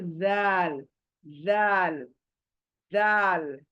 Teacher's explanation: जबान चौड़ी होकर थोड़ी बाहर आएगी मुंह से, और ऊपर के दांत कट करेगी जबान को